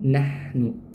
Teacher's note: Ha di sini dia memiliki sifat rakhwah, mengalirnya aliran suara dan udara. Jadi, dia juga memiliki sifat hames, ya.